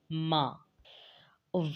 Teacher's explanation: با ہونٹوں کی تری سے ادا ہوتا ہے، ما ہونٹوں کی خشکی سے ادا کیا جاتا ہے